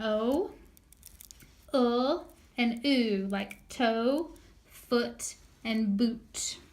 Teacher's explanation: In the back of the mouth, rounded mouth, is an O, and oo